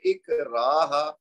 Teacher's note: रा के बाद अलिफ मद है तो उसको 2 हरकत देंगे